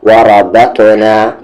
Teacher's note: وا پہ زبر وا، را پہ زبر را، تا کو تا میں بت، وربت نون کے ساتھ الف نا، وربتنا را کو ہیوی کرتے ہوئے اور یہ تا ہیوی پلس اس پہ قلقلہ